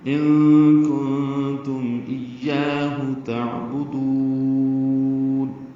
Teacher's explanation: یا کو لمبا کریں گے، 2 حرکات، ہا سہل سے نکالیں گے · لمبا کر کے نون ساکن پہ اظہار ہوگا